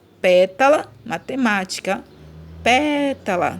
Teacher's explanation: A antepenúltima sílaba, que é a mais forte. E matemática, ó, matemática também é a antepenúltima, né? · Essa é a última, essa é a penúltima e essa é a antepenúltima. A antepenúltima sílaba é que é a tônica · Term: proparoxítona